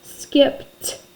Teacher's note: P is unvoiced, so ED is going to be unvoiced.